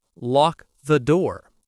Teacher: The K connects to the th.